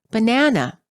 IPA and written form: bə ʹnænə (banana)